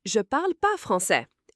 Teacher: In spoken French, people often drop the ne and just say, je parle pas français.